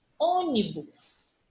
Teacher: A antepenúltima sílaba tônica, então eu tenho uma palavra proparoxítona.